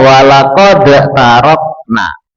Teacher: Tidalnya itu tidak dibaca tapi langsung masuk ke huruf ta. Jadi walaqad tarokna ini namanya idgham mutajanisen ya, huruf yang sejenis.